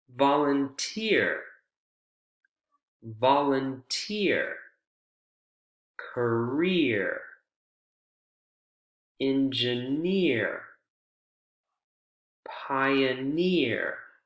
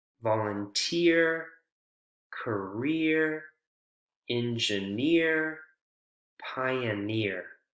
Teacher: The syllable where the suffix is located is the one that receives the word stress.